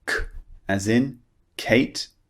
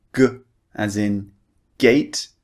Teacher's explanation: The unvoiced sound is K, and the voiced one is G.